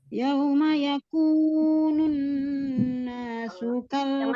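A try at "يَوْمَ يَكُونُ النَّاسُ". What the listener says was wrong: Jangan lompat nih. Yauma yakunun itu lompat nih. Waw sukunnya disempurnakan, dia harus dimonyongkan kedua bibirnya. Yauma yakunun gitu ya.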